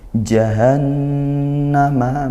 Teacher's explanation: nun bertasydid dibaca ghunah atau dengung